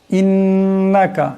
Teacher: গুন্না হবে, নুন মুশাদ্দাদ আছে